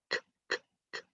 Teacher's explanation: the letter K is pronounced in the back of your mouth